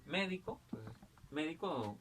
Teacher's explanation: Yo tengo la palabra médico, entonces, médico, la mayor fuerza de voz en me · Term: esdrújulas